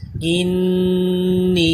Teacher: اس نون مشدد کے ساتھ یا مدہ ہے، اس کو ایک الف کے برابر کھینچ کے بھی پڑھنا ہے اور غنہ بھی کرنا ہے